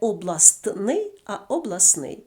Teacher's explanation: чином три приголосних опиняться поруч оскільки українська мова милозвучна мова і скупчення приголосних не характерне тому один приголосний випадає тобто відбувається спрощення